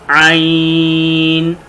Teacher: عین حلق کے درمیان والے حصے سے ادا ہوگا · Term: حروف حلقی